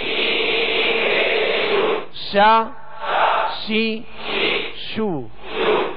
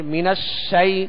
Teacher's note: اعوذ باللہ اور بسم اللہ، جسے تعوذ اور تسمیہ کہتے ہیں، یہ ان کی بھی جو بتائی گئی تھی احتیاطی کہ اعوذ، اب زال ہے تو زال کو نرمی سے پڑھیں گے، اور اس کا پیش ہے تو اس کو دراز نہیں کریں گے۔ من الشی، شین کی آواز جو ہے آواز منہ میں پھیل کر ادا ہوگی